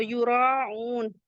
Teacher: یراؤن مد متصل ہے، 4 to 5 کاؤنٹ elongate کریں گے کیونکہ حمزہ اسی کلمے میں